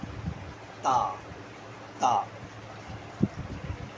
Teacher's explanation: با، تا، تا، تا جو میں ہے، تا میں نکالنے میں زبان کی نوک اور اوپر والے جو سامنے کے دانت ہیں ان کو دخل ہے۔ تا زبان کی نوک اوپر والے دانتوں کے کنارے پر لگے گی